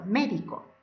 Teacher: Son palabras que llevan el acento en la antepenúltima sílaba. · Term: palabras esdrújulas